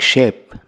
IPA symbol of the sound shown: i